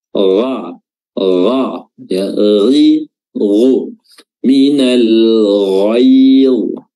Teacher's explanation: huruf ghain makhrajnya adalah adana al-halq, tenggorokan bagian atas, ya, dan dia memiliki sifat isti'la, sifat yang tebal.